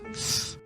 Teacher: The vocal folds never vibrate in the whole process. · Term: consonant th